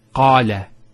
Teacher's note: Notice the elongation of the A sound.